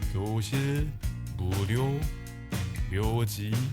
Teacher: Think of it as ㅣ plus ㅗ. Pronounce it as one syllable.